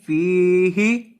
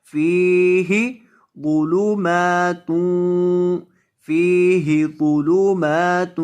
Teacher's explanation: فا کو لمبا کریں گے، اس کے بعد یا مدہ ہے، اور ہا کو لمبا نہیں کریں گے